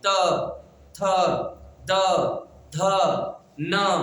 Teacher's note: त जब पढ़ेंगे ना तो आपकी जीभ दांत से स्पर्श करेगी